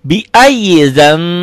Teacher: Ini bunyi, harusnya kan biayizam, biayizan. N-nya berubah jadi M, tapi bindeng sedikit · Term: iklab